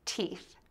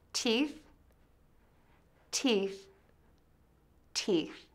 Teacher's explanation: Start by saying the T sound by touching the tip of your tongue to the back of your top front teeth. Add the long E made by smiling and make the sound long. Then end with a sh sound by sticking your tongue out of your mouth.